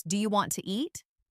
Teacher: The sounds blend, sometimes letters are dropped, like the T in want to, and sometimes new sounds appear between words, like a I sound, or a soft ch. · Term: connected speech